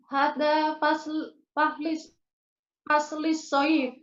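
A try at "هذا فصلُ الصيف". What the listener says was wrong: Hada faslu. Nggak ada yang menyebabkan dia kasrah. Hada faslu.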